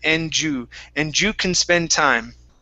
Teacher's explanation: we don't want to finish the D, saying enda. Okay, combine the D and the U